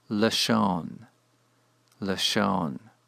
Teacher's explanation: the first vowel reduces from a kametz to a shava